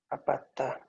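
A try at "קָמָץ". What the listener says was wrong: This is pata, and this is kamet. No, you are not supposed to pay attention to the holem here. Just to stay with the most important information, which is kamets.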